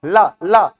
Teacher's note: आप ला ला उच्चारण करेंगे तो यहां पर वायु समझ में आती, पीछे से वायु बाहर आती है, इसलिए इसे क्या कहा जाता है, पार्श्व वर्ण कहा जाता है